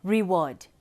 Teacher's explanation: the word reward we've got re as unstressed and word as stressed